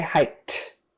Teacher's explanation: that K is unvoiced so the Ed becomes an unvoiced T